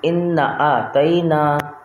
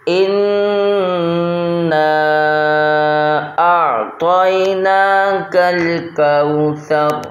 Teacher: ہم نے حمزہ کو نون سے ملانا ہے اور ایک الف کی مقدار میں اپنی آواز کو ناک میں لے کر چلے جانا ہے